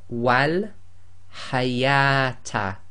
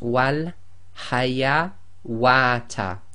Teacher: if you have the wow with the dagger alif followed by the ta marbuta, then you do not pronounce that wow.